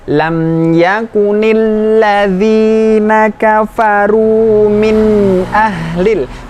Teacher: min ahlil nya masih ada kedengeran tetapi tidak dengung